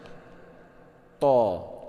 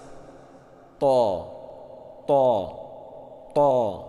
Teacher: syiddah, suara tertahan, dia itu nafas ditahan, suara juga ditahan. To, tahan dulu baru lepas.